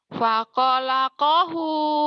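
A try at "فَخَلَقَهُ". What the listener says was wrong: Khair. Khair, khair, khair. Pakho bukan pako. Pakho, Pakho. Emi koir, emi koir, imu khair harusnya. Khair. Pakholaqahu.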